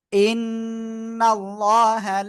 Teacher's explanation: ইন্নাল্লাহা, এখানে ওয়াজিব গুন্না, আল্লাহ শব্দের লাম মোটা